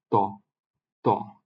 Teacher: দদ এরপরের লেটারটা হচ্ছে আমাদের ত। ত জিহ্বার অগ্রভাগটা উপরের পাটির যে সম্মুখ ভাগের দুইটা দাঁত তার একটু আগে মূলে ওখানে গিয়ে জিহ্বা স্পর্শ করবে, ত। ত এটা উচ্চারিত হবে ত।